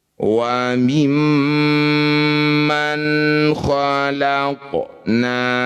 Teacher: Nun sukun bertemu K disebut izhar halqi. Bunyi nun baca jelas tidak usah dengung.